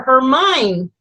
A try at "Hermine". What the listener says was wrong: You don't pronounce the H.